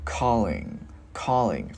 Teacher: Cái mình ngân cái chữ ngờ ra.